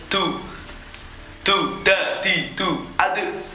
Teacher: Kalau di Indonesia itu tidak mengenai gigi. Sedangkan makhrajnya Al-Quran ini punggung depan atas lidah. Ini ditempel di belakang gigi dari atas mengenai gusi. Jadi mengenai gigi ini. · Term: Dal